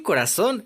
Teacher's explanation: en corazón la sílaba tónica está en la última sílaba